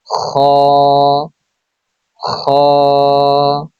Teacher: কণ্ঠনালীর শেষ হইতে উচ্চারিত হয় খ